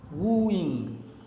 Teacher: Here instead of iambus, the poet Shakespeare has presented a trochee, in which the first one is stressed, the second one is unstressed.